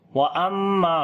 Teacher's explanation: میم کے اوپر شاد ہے، غنہ کریں گے، لمبا کریں گے، الف مدہ ہے، نون ساکن کے بعد خا گئے، اظہار حلقی کریں گے، نون کی آواز کو ظاہر کر کے پڑھیں گے اور نون کے اوپر صفت توسط بھی ہوگی، ہلکی سی آواز کو کنٹینیو کریں گے۔